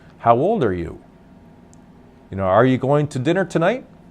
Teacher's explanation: if I'm going to ask a question my voice will go up at the end to reinforce that it's a question